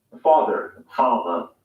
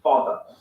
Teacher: Father ends in a simple schwa vowel, like father.